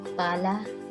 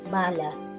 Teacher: ang P ay binibigkas ng walang tinig, samantalang ang B ay mayroon